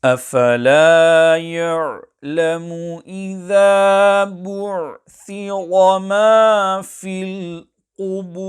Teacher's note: Qalqalah must not be carried out on the words يَعْلَمُ and بُعْثِرَ on the ayn sakina.